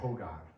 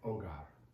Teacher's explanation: The second G, since it precedes an A, sounds like a G. H is different in Spanish, but the good news is it's very easy. You just don't pronounce it.